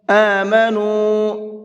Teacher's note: یہاں پر یہ چھوٹا مد ہے، اس کو 1 سے 3 الف کے برابر کھینچ کر کے پڑھیں گے